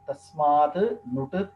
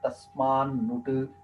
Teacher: ತಸ್ಮಾನ್ ನುಡಚಿ ಸಂಧಿಯ ವಿಚಾರ ಒಂದು ಸ್ವಲ್ಪ ಇದೆ, ಅದನ್ನು ನಿಮ್ ಗಮನಕ್ಕೆ ತರ್ತೀನಿ, ಯಾಕಂದ್ರೆ ಅದು ನೀವು ತಿಳ್ಕೊಳ್ಳೋದು ಅನುಕೂಲ. ಇಲ್ಲಿ ತಕಾರ ನಕಾರ ಆಗತ್ತೆ. ತ ಇದ್ದಿದ್ದು ನಕಾರವಾಗಿ ಪರಿಣಮಿಸುತ್ತೆ. · ಈ ಸೂತ್ರದಿಂದ ತಕಾರ ಅನುನಾಸಿಕ ಆಗುತ್ತೆ ಅಂದ್ರೆ ತಕಾರ ವರ್ಗೀಯ ವ್ಯಂಜನ ಅದರ ಪಂಚಮ ವರ್ಣವಾಗಿ ಪರಿಣಾಮಿಸುತ್ತೆ, ಅಂದ್ರೆ ನಕಾರ ಆಗುತ್ತೆ